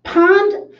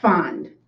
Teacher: p is just lips and air f is teeth lower lip air